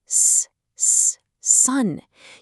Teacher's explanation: The letter S is a continuous hissing sound.